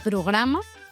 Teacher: Quan combinem la R amb la P, com a programa, ens costa perquè la primera lletra, la P, és un so bilabial i la segona és alveolar